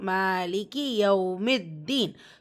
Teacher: மா இங்கே அலிஃப் சகிரா இருக்கா, 2 ஹரக்கத்தில் நீட்டம் கொடுத்து ஓதணும்